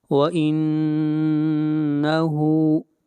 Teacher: نون کے اوپر شد ہے، غنہ کریں گے اور ہا کو کھینچ کر پڑھیں گے ایک الف کے برابر، ہا کے اوپر الٹا پیش ہے۔